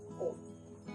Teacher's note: जब हम ओम का उच्चारण करते हैं तो ये ह्रस्व स्वर और दीर्घ स्वर से तिगुना समय लेते हुए उच्चारित होता है। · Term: प्लुत स्वर